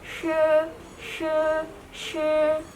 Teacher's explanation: untuk mengucapkan sh ini itu ujung lidahnya bertemu dengan langit-langit keras. Jadi, langit-langit yang di depan itu tapi tidak terlalu menempel supaya ada udara yang keluar. Jadi bunyinya sh se sh.